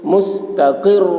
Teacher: رائے مشددہ کے اوپر دو پیش کی تنوین ہے اس لیے را کو پر پڑھیں گے. رائے مشددہ پر زبر ہو یا پیش ہو تو را کو پر پڑھتے ہیں.